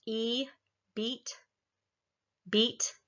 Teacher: the resonance is up towards the front of the mouth and the tongue is up high